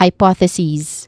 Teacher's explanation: hypotheses with a short e vowel sound at the end and a buzzing sound as well